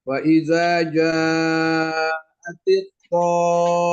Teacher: untuk mim dan nun 2 huruf itu harus dibaca dengan gunnah, dengung